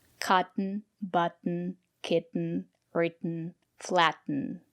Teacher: we have these words we pronounce the letter t as a stop t